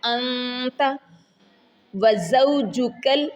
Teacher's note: اخفا کا، نون کو آپ چھپا رہے ہیں ناک میں، انت وزوجک نون مشدد کے اوپر غنہ آئے گا، ایک الف کے برابر